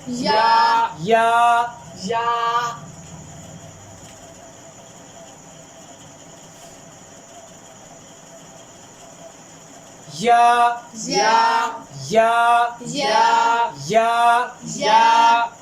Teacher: اس کا مخرج کیا ہے زبان اور تالو کے درمیان سے